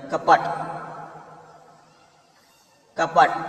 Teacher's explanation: म्हणजेच शेवटचा वर्ण हा निर्भूत म्हणजेच अर्धवट किंवा अपूर्ण उच्चारला जातो. मराठी शब्दात शेवटी वर्ण येतो तो अर्धवट किंवा अपूर्ण उच्चारला जातो